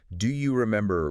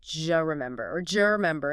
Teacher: What happens is assimilation and reduction combined. The D sound at the end of do and the J sound like Y in yes at the beginning of U often merge together.